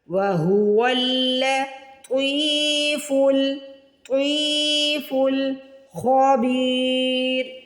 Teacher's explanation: خا کو موٹا پڑھیں گے اور با کو کھینچ کے ادا کریں گے